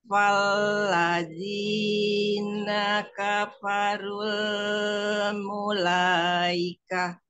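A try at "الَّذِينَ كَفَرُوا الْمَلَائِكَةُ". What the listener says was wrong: Coba dari alladzina. Jangan dari fa.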